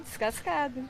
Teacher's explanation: Ah, não, sem chiado. Eu sou gaúcha. Gaúcho não chia.